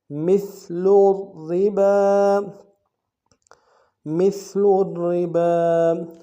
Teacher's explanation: پہلا را موٹا ہوگا، تشدید ہے، را سے پہلے، را ساکن سے پہلے پیش ہے، اور دوسری را جو ہے باریک ہوگی، را کے نیچے زیر ہے، باقی اوپر کھڑا زبر ہے، ایک اندر میں کھینچیں گے.